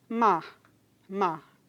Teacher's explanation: quando o Pernambucano Diz Mar ele apaga esse rótico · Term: apagamento